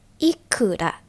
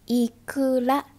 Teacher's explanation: Ikura, the plunging tone is how much or how many. Ikura, the rising tone is fish roe.